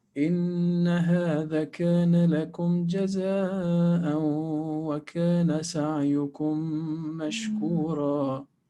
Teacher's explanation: make them into one mim mushaddada, one mim mushaddada with two harakat length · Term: idgham shafawi